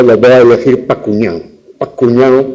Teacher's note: la preposición para, que tiene 2 sílabas, pero que esa segunda sílaba es tan débil que en lengua descuidada suele desaparecer